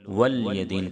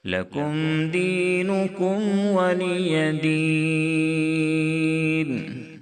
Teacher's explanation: ولی دین کو بعض مرتبہ لوگ ولی دین پڑھ دیتے ہیں، یعنی لام کو ساکن کر دیتے ہیں۔ یاد رکھیں کہ لام کے نیچے زیر ہے اور زیر کو ظاہر کرنا ہے